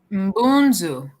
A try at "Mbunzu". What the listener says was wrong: Be careful, there's no long vowel here. Mbunzu.